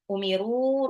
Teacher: Umiru roknya itu juga panjang, mad jaiz munfasil karena ketemu sama alif ya